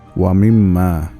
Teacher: গুন্না নাকের ভিতর থেকে উচ্চারিত হয় যেটা মিম আর নুনে পাওয়া যায় এইটার উচ্চারণটা বাংলায় কোন শব্দের চন্দ্রবিন্দু থাকলে যেমন নাকের ভিতর নিয়ে